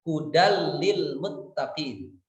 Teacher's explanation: Contoh tanwin menghadapi lam, hudal lil muttaqin, hudan lil muttaqin, tapi dibacanya menjadi idgham bila gunnah, hudal lil muttaqin. Tanwin itu lebur kepada lam tanpa disertai dengan gunnah.